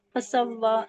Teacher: سین کو واو سے ملائیں گے، تشدید ہے، اور واو کے اوپر کھڑا زبر ہے، الف مدہ کی طرح کھینچ کے پڑھیں گے